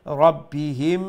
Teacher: Okay, if you're going to continue, okay, فيها بإذن ربهم, if you're going to continue, okay, you can, but then you'll have to implement the rule of mim sakin, okay? So after the mim sakin there is another mim. Now you'll have to do the idgham with gunna and you'll have to pronounce rabbihim like that, okay?